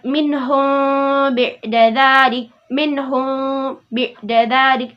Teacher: Nah, ini masuk dalam hukum bacaan mim mati ya, yaitu ikhfa syafawi, yaitu mim mati bertemu dengan huruf ba. Maka karena ikhfa di sini itu samar-samar, maka kita membacanya itu secara samar-samar juga.